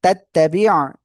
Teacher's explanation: কোনো টান নাই, গুন্না নাই, শুধু আইনটা গলাটা চেপে পড়তে হবে